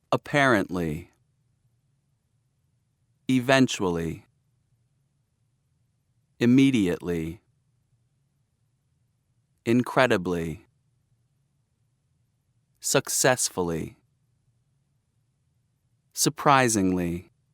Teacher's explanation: stress on second syllable